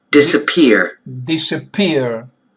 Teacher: Accent is on the last syllable.